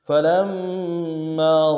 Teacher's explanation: فا کو نرم سے ادا کرنا ہے، لام کو میم کے ساتھ ملائیں گے، میم کے اوپر تشدید زور دیں گے ، اگلے میم کے ساتھ الف مدہ ہے، ایک الف دال